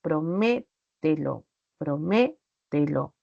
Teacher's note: en la antepenúltima sílaba cuando decimos por ejemplo prometo promételo entonces la sílaba me tiene la mayor fuerza de voz